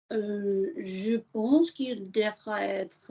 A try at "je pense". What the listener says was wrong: Of course, these vowels are sounding nice, but we don't do vowels through teeth and gum. We do vowels through a soft. Look, here's full vowels. Ooh, mouth closed. Not je pense. No, relax. Oui, je pense que. If you need to use teeth and gum, the chest isn't doing enough. Je pense. Yeah, more chest, less space.